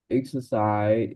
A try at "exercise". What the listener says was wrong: last consonant, which is the S. Exercise. Exercise.